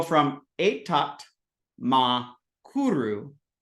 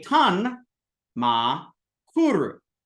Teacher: want to look here is that t change a lot so a t will change to a n when it encounters a ma